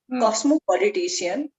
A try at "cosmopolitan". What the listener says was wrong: Oh, cosmopolitan, not politician, politan. politician, politan.